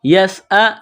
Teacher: سین میں سیٹی کی آواز پیدا کریں گے، سین کو باریک کرنا ہے